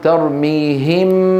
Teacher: يبقى صوت الغنة مع الحرف المخفى اللي هو الميم يعني، ولا يكون مع صوت الحرف المخفى عنده اللي هو الباء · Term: بقاء الغنة